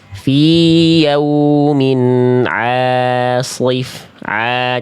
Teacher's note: Nah ini jangan terbawa shad. A jangan masuk hidung juga ainnya. Ainnya tipis ya.